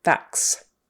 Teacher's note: Send me a fax. That's KS. That X is KS sounding.